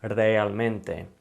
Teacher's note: It's not one sound that we're using with the R. It's kind of rolled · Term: rolling R sound